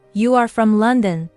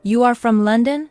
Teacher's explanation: The easiest way to ask a question is to take a statement and change your voice. Your voice goes up at the end. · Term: rising tone